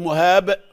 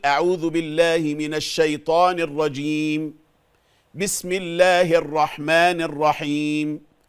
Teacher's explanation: فالباء فيها قلقلة في الآخر